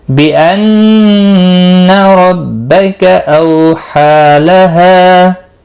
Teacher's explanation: नून मुशद्दद पर गुन्ना होगा, रो ज़बर की वजह से पुर पढ़ा जाएगा